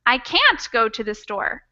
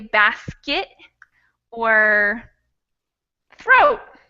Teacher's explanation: We barely say it. So when I say can't, I'm saying a T, but it's not a T in the same way that I would pronounce turtle. It's a stop in my throat. So I can't, the same way I might say basket or throat.